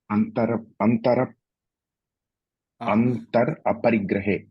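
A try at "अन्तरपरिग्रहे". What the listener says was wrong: Antara Parigrahe, that's all. Antar Parigrahe you should not say. Like Hindi, that Ra should be fully pronounced. Antara Parigrahe.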